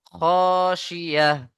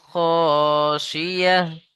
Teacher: আয়াতের শেষে গোলতা, তাই হা সাকিন করে পড়তে হবে।